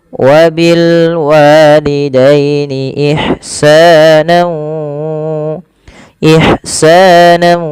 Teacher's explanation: masukkan tanwinnya kepada huruf waw, nau, kemudian ditahan dengan 2 harokat. Ya, ditahan 2 harokat bunyinya. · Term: idgham bi gunnah